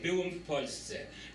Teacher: this accent is on the next to the last syllable instead of being like on the last syllable